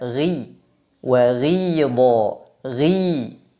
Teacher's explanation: huruf ghain tidak boleh dibaca terlalu tebal ketika berharakat kasrah · pada saat kita mengucapkan huruf ghain bagian tengah lidah tidak mengalami cekungan yang mengakibatkan terbukanya ruang antara tengah lidah dengan langit-langit atas maka suaranya tidak terlalu tebal memang tebal tapi tidak terlalu tebal · Memang tebal, tapi tidak terlalu tebal seperti huruf-huruf itbaq, semisal huruf shad, huruf dhad, huruf ta, dan huruf dha. Maka huruf ghain tidak boleh dibaca terlalu tebal ketika berharokat kasrah. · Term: tafkhim nisbi, infitah